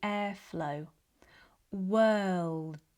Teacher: the D at the end should not have too much air. If you release too much air, it will sound more like T. That's why we almost want to stop the airflow.